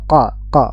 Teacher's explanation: dan dia pangkal lidahnya naik tebal Q Q suaranya naik ya Nah sifat yang pertama syidah suara aliran suara tertahan · Dia lebih ke belakang dan dia pangkal lidahnya naik tebal. Qa, suaranya naik ya. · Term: huruf qaf